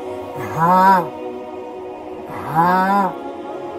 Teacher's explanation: یہ جو ہا آیا ہے یہ سینے سے آواز آتی ہے، اس کی گلے سے نہیں آتی، ہا نہیں ہے، یہ ہے ہا ہا۔